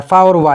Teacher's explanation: दंतोष्ठ से उच्चारित होने वाले व्यंजन होते हैं